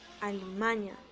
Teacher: está nasalizando la A después de la M